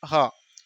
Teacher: एक चौथा व्यंजन होता है कांकल्य वर्ण ह